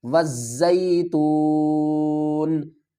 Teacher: وقف کی صورت میں نون کو ساکن پڑھیں گے، نیچے والی زیر کو ڈراپ کر دیں گے، وزیتون۔ سین جیم زیر سج، جیم یا زیر جیم، یا مدہ ہے، ایک الف کی مقدار کھینچ کر پڑھیں گے۔